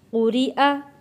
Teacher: وَإِذَا قُرِئَ، قاف موٹا پڑھیں گے، قُرِئَ، یہ را ہم پتلا پڑھیں گے کیونکہ را کے نیچے زیر ہے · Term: را کو پتلا